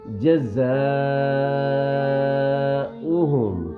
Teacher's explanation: زا کو سیٹی کی طرح پڑھیں گے اور سختی سے پڑھیں گے. جزاؤہم, ٹھیک ہے.